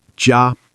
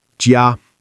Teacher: 1st tone, flat and high